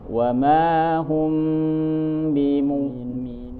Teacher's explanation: mim ketemu ba namanya ikhfa syafawi. Ini juga ditahan. Suaranya harus ditahan. Dengung ya.